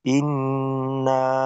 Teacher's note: প্রথম শব্দেই না, 3 আলিফ টান হবে